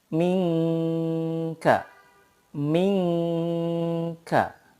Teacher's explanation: ketika mempraktikkan bacaan ikhfa itu disamarkan dan juga lidah kita itu sudah siap ke huruf berikutnya